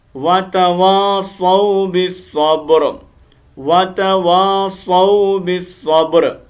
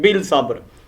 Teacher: बा को डायरेक्ट हम साद के साथ कनेक्ट करेंगे